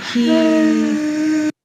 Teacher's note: you can hear that their voice is breathy.